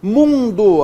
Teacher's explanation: a tônica é nasal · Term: tônica nasal